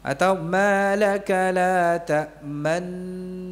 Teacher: Nun yang pertama disukunkan, wa idghamiha fi tsaniyah, dan diidghamkan, masukkan kepada nun yang kedua. Ya, ta'manuna menjadi ta'man.